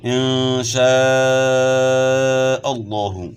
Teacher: لفظ اللہ کا لام جو ہے موٹا پڑا جائے گا کیونکہ لفظ اللہ کے لام سے پہلے والے حرف پر زبر ہے